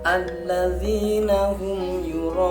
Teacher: Yura'nya dibaca panjang 3 alif atau 6 harokat. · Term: mad wajib muttasil